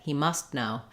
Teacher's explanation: I'm putting my tongue up for the T blocking the air and stopping it like I would for a t but not releasing it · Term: unreleased T